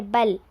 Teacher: لام کو ہم باریک پڑھیں گے. لام پر جزم آیا ہے.